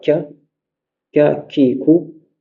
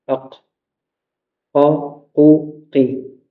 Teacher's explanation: juste devant, tu as K, K, Ki, Ku, et derrière le Kaf, tu as le Qaf